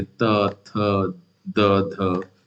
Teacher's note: ऊपर के दांत उच्चारण में मदद करते हैं। उदाहरण के लिए त थ द ध दंत ध्वनियां है